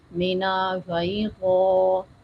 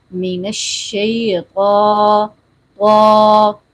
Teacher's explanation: طا کو موٹا کرتے وقت ہونٹوں کو گول نہیں ہونے دینا, ناک میں آواز نہیں جانے دینی, واؤ کی آواز نہیں آنے دینی. کچھ لوگ پڑھ جاتے ہیں مینا شیطا, یا وا کر جاتے ہیں, یہ آواز غلط ہے.